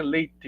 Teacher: já bastante alta então acaba que a língua meio que que não apenas toca os alvéolos né leite mas ela se se se deita digamos assim sobre o palato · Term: palatalização